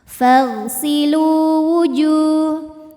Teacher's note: Lu mad thobi'i dzohiri karena ada waw sukun didahului baris dhommah. Maka huruf lam panjang dua harakat.